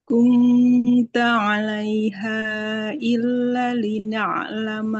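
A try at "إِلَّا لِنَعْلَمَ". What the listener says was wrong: Illa lamnya panjang. Fathah ketemu alif.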